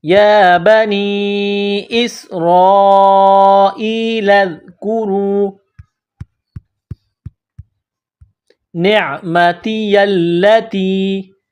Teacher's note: را ای لذ کورو، را کو موٹا کرنا ہے